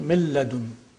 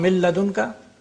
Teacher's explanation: If it is followed by lam, it becomes lam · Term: complete assimilation